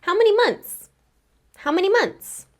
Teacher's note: in fast speech, I can skip over that middle TH sound, and it'll just sound like months.